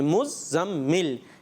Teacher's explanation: زا کے اوپر تشدید ہے، زا کو 2 دفعہ پڑھیں گے